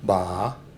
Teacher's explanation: ba with the downward tone is word of respect to a woman means grandmother